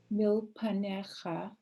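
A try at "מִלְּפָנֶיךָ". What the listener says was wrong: It's fa. That's a fe. Milfa.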